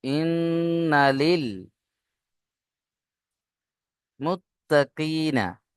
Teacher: নুনের উপরে তাসদীদ অজীব গুন্না, তাই আমরা এখানে গুন্না করব লাম লামজের লিল।